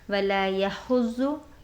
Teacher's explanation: वला यहुज़्ज़ु, यहाँ पर देखें हा वस्ते अलग से अदा करिएगा, ज़ाद को पुर करिएगा क्योंकि ज़ाद हुरूफ़ मुस्क़लिया से है। हा को ज़ाद में शिद्दत के साथ मिलाएंगे क्योंकि ज़ाद पर शद भी आई हुई है और एक बार ख़ुद उसकी हरकत से पढ़ेंगे।